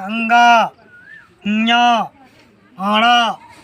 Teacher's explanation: सभी वर्ग का अंतिम वर्ण का उच्चारण स्थान होता है नासिका। आप अंगा कहिए, नाक से ध्वनि आएगा, अंगा, ञ, अड़ा कहिए, आप लोग के नाक से ध्वनि यानी नासिका।